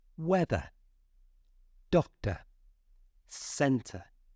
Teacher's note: we're not pronouncing that R because it doesn't have a vowel sound after it